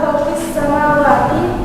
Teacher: hukum bacaan tajwidnya alif lam syamsiyah karena alif lam bertemu dengan huruf sin sehingga huruf alif lam tidak dibaca